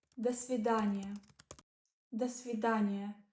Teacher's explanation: It means goodbye, pronounced like да, сви, да, ни, я. The do is pronounced as if it is part of the next word.